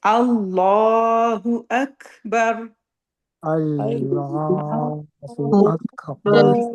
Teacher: جب ہم را پہ رکیں گے را کو موٹا پڑھنا ہے منہ بھر کے